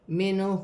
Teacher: منہ نون ساکن میں غنہ نہیں ہوگا کیونکہ آگے ہا حروف حلقی میں سے ہے